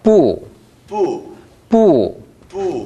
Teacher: 정확하게 위에서 아래로 내려옵니다. 사성이니까 不.